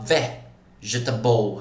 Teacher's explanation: Contando do final para o início da palavra é a quarta sílaba tônica.